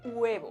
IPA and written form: 'we.β̞o (huevo)